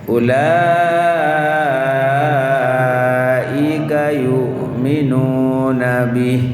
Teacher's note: Ya, makanya disebut idgham bigunnah. Idghamnya nun masuk ke ya dan ada gunnah, ada gunnahnya dengungnya, suara sengau ke hidung.